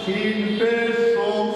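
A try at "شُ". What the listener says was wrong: বাংলা হবে না, বাংলা না আরবিতে বলতে হবে শিন পেশ সো,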